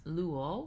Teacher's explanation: We have 2 syllables with the ultima being long, and so the accent will be on the penult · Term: acute on the penult